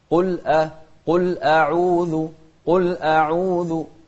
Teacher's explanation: ونرقق الهمزة لأن الهمزة مش من أحرف التفخيم